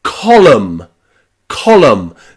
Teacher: That final N is silent.